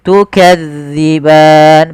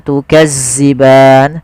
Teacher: pada lafal Zal hati-hati ya teman-teman jangan sampai dibaca dengan Zai jangan tukazziban sering terjadi yaitu mengganti huruf dalal dengan Zai tukazziban